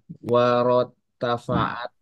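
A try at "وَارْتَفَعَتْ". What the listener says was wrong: Nah, ini wartafa'at. Ronya itu ya, ronya itu sukun ya.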